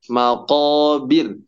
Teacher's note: jangan diayun harus maqobir dibaca pendek